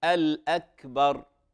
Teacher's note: الكاف ساكنة وهي من حروف فحثه شخص سكت أو حثه شخص فسكت، فهذه همس